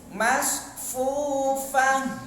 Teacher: Upah ini kan tebal. Tidak ada anginnya, harus ada anginnya. Hamas dijiuskan, didesaskan, dihembuskan anginnya.